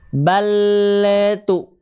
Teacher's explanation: Kenapa lam suka memantul karena makhraj lamnya terlalu terburu-buru lepas